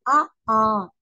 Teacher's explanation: ஆ வாயை திருப்புறோமா அ ஆ வாயை திறக்குறோமா இப்படி திறக்குறப்பயே அ ஆ இந்த இரண்டு எழுத்துக்களும் வாய் திறக்கும் முயற்சியால் பிறக்கின்றன